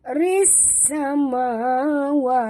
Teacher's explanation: Ris samawati, ris sini masukkan bunyi ra baris bawah terus ke dalam sin tanpa membunyikan alif lam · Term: idgham syamsi